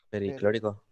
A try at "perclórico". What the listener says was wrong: Perclórico. La I no, perclórico. Per e ico, Bien.